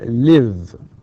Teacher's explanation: المثال الآخر اللي هو الvoiced، الأفعال الأخرى اللي هم بعض الأصوات أو بعض الكلمات أو بعض الأفعال تنتهي ب voiced sounds. final sound is voiced، بمعنى إنه في الحبال الصوتية فيه اهتزاز